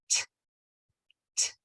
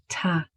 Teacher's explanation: The correct sound for T is voiceless. There should be no voice, only air. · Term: pure sound for T